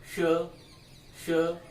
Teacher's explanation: ये मूर्धन्य श, श, जिह्वा ऊपर मूर्धा से टकराती है